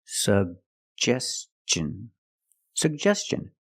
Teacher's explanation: jump pronounce both sug Gest suggestion and t i o n the T makes the CH sound so together suggestion · put the stress on the second syllable